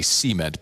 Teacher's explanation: In the south, we put the emphasis on the first syllable and say cement